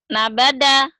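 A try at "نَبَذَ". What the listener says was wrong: Nabaza. Zal. Nabaza.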